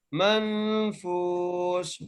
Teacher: فا کو ایک الف کی مقدار کھینچ کے پڑھ رہے ہیں · غنہ کرنا ہے کیونکہ نون ساکن کے بعد حروف حلقی میں سے کوئی حرف نہیں ہے، اس لیے ہم نون ساکن پر غنہ کر رہے ہیں ، منفوش، فا کو ایک الف کی مقدار کھینچ کے پڑھ